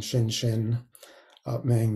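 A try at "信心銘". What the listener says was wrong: That's correct. The two xin has different tones. one is a fourth tone, so going down xin. the second, the heart mind is the first tone, so it's first xin ming.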